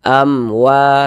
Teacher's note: Ini mim sukun bertemu dengan huruf waw, bukan huruf ba, bukan huruf mim, tapi huruf waw, maka hukumnya izhar syafawi. Maka kita baca jelas, tak berdengung, baca pendek saja.